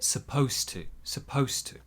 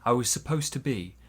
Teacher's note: The to also becomes more of a t.